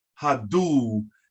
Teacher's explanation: the uw is pronounced ooh you carry it a little bit